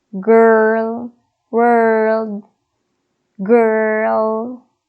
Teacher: or sound is the uh sound for this symbol okay so the tongue is in the center the sides of the tongue pulls back a little to create the sound r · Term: ER sound